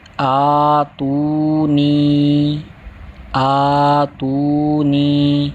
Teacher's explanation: کھڑی حرکات ایک الف یعنی 2 حرکات کے برابر کھینچ کر پڑھیں گے